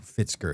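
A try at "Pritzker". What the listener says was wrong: Is it Fitzker with an F? It's not Pritsker.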